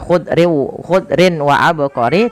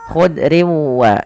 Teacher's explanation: Memasukkan tanwin kepada huruf wau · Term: idgham bighunah